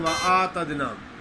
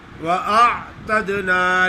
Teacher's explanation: عین نہیں پڑھتے، حمزہ پہ کھڑی زبر پڑھ لیتے ہیں